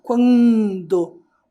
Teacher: quando esse n faz um som nasalizado final de sílaba